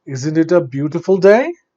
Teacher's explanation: day day has to come down but only in close-knit questions the tone goes up and stays up